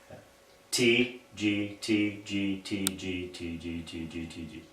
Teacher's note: each time with the G sound the the middle of your tongue or the rear part of your tongue comes up and touches the roof of your mouth